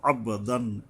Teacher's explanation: বা উপরে কলকলা মানে প্রতিধ্বনিত